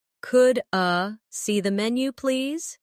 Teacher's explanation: In fast speech, could I sounds like could a